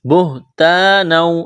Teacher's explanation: الف مدہ ہے، ایک الف کے برابر کھینچنا ہے